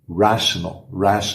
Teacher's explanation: começa com aquele r caipira e um é bem aberto e o t vira aquele som de chiado